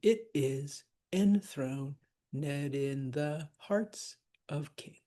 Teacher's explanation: we're not going to want to stress the in, and we're not going to stress the ed. So that would technically be a Pyrrhic.